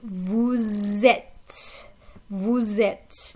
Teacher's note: Notice that there's a liaison between the S and the E